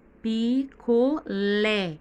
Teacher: que o lê está mais forte essa é a sílaba tônica da palavra picolé